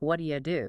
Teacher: You'll often hear that slide into something like, "What do you do?" See how that you just softens to a quick yah, right?